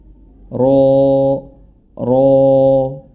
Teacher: ro yang berharakat fathah memiliki sifat yang tebal